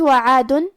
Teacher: یہاں حرف العین ہے، اور عین کی ادائیگی حلق کے درمیان والے حصے سے ہے. آخری میں دال پہ تنوین پیش ہے.